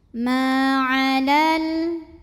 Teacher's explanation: Maka terlepaslah huruf sukun yang pertama. Jadi jika wasol lamnya jangan dipanjangin, pendekin. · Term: takhallus bil hadfi